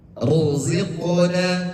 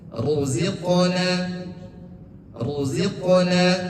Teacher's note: Ro yang berharkat dhammah itu dibaca tebal.